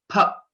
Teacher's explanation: the right pronunciation is pha because both our lips should come together